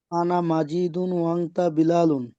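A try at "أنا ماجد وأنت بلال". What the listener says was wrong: মাজিদুন কেন হবে ভাই? এখানে মিমের পরে তো আলিফ আছে, টান দিচ্ছি না কেন?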